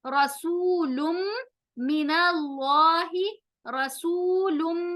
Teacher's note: رسولم, रसूलुम, रॉ मोटा होगा, सू सीन बारीक सीटी की आवाज, सू वाव मद्दा, लुम लाम के ऊपर नून तनवीन, मीम के साथ इदगाम विद गुन्ना